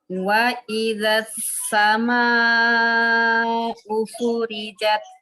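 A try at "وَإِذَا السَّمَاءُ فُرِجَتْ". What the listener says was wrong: Sin, jangan kayak sa. Wa idzas, huruf sofirnya tampakkan. Wa idzas sama'u furijat.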